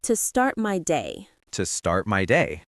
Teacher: Notice how my voice goes up at the end of the word day?